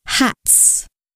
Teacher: The sound of the plural ending is determined by the sound that comes before the plural S. If the plural S comes after a voiceless consonant, such as t in hat, it will make the voiceless sound s, hats.